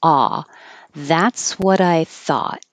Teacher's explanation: it so just hold your tongue in the T position and the vowel is a so open and keep your lips straight